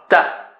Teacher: تا استفالہ لو ہے، نیچے ہے اس کا ساؤنڈ